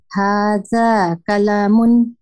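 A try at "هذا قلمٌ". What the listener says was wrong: কলামুন, হ্যাঁ ম্যাডাম আবার বলেন, কোনো মাদ হবে না, কলামুন,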